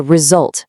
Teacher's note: If you want a good outcome at work, it's not a rejolt with a J. It's a result with a nice buzzing Z.